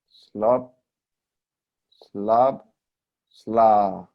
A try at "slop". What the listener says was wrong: I think you could open your mouth more for slop. So even though it's fast, it's like fast and big. You still have to drop your jaw on the short O. Otherwise, it's going to sound maybe like slup or something.